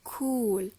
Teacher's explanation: When you hear the word cool, have you heard after the k some air, right? Or an H sound